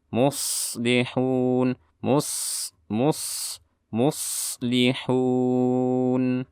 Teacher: ada shad juga bersifat rokhawah, jadi suara ini juga ditahan. Sama seperti ha.